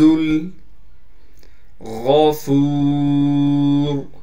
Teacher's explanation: غین کو موٹا کر کے پڑھنا ہے، فا کے بعد واو مدہ ہونے کی وجہ سے فا کو ایک الف کی مقدار کھینچیں گے، را کو وقف کی حالت میں موٹا پڑھیں گے۔